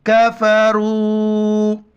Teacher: مد کی وجہ سے 4 الف کی مقدار کھینچنا ہے. کاف زبر کا، فا زبر فا، را مد پیش رو، کفروا.